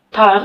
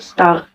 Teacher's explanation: the sound in the word tire is normally pronounced with a stronger puff of air than is present in the sound in the word star